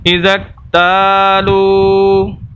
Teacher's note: تا کو لمبا کر رہے ہیں، یہاں پر الف مدہ ہے، لام کو لمبا کر رہے ہیں، یہاں پر واو مدہ ہے